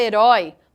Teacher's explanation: Na palavra herói, nós temos uma oxítona também terminada em ditongo, porém esse ditongo é aberto. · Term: ditongo aberto